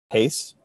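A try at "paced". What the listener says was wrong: Not sure if you tacked on that D there at the end. Did you tack on that D?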